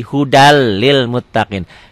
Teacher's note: n-nya jadi hilang tuh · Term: idgham bilaguna